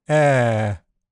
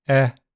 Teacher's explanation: It's generally a bit more open than the short e sound, but they are close enough to be treated as a long short pair.